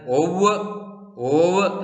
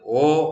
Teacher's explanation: ഓ എന്ന സ്വരത്തിന് ശേഷം വരുന്ന വാവ് ഉച്ചരിക്കുന്നില്ല, ഇത് ഓ എന്ന് വായിക്കണം